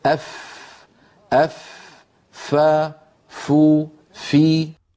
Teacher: فا کا مخرج، اس طرح فا ادا ہوتی ہے کہ اوپر والے سامنے کے دو دانتوں کو نچلے ہونٹ کے تر حصے پر رکھ کر ادا کیا جاتا ہے۔ ہونٹ کے تر حصے کو ہونٹ کا باطن بھی کہتے ہیں۔